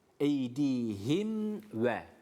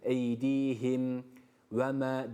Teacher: Burada yine izharı şefevi yapacağız Çünkü mimde dudaklar kapandı